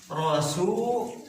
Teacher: Harus tebal, enggak tipis. Tebal ke lafaz Allah.